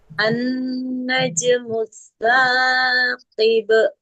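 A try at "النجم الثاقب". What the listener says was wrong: 2 harokat saja. Saqib. An-najmu saqib.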